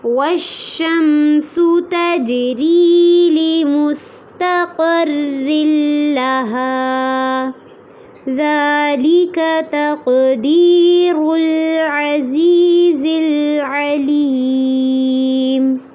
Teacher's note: ذال کو نرمی سے پڑھنا ہے اور اس کو لمبا بھی کرنا ہے. ذَلِكَ تقدیر میں قاف پہ قلقلہ کرنا ہے اور را کو پر کرنا ہے.